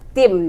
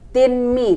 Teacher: Tim, nah di sini ada idgham bi gunnah karena tanwin bertemu, dibacanya dengung sambil melebur ke huruf mim, ke huruf mim, yaitu nun sukunnya melebur ke huruf mim, dibacanya tim, jangan tinmi tapi tim, seperti itu karena hukumnya adalah idgham bi gunnah.